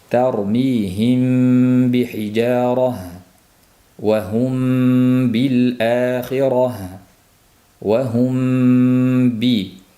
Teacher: sukunli mim b harfiga yo'liqqanda mimni ba'ning chiqadigan joyiga berkitib dimoq bilan talaffuz qilish · Ikki harf ham, ya'ni mim va ba harflari labdan chiqqani uchun shafaviy, ya'ni labga tegishli deb nomlandi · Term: Ixfo shafaviy, igfo shafaviy